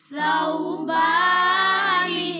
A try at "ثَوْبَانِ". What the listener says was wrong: بچوں سا پہ سیٹی نہ نکالیں، سین نہ بنائیں. ثو. اور دوسرا سا کے آگے جو واو ہے نا، یہ واو لین ہے.